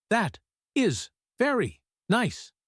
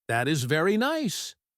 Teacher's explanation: The word very should be higher and longer.